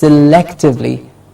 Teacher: Selectively, lek gets the stress, selectively.